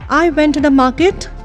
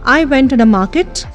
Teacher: Market gets a rising tone.